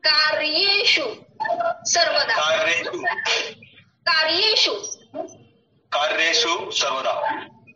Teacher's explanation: र को थोड़ा उस पर स्ट्रेस दीजिए, कार्य शुद्ध कहलाएगा